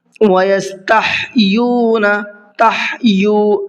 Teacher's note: ہا کو حلق سے نکال کر کے پڑھنا ہے